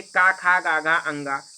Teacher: कहाँ से बोला जाता है, तो बोला जाता है कंठ से